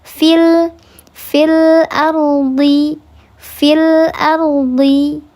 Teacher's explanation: dibacanya tafkhim, tebal karena ro-nya ro tafkhim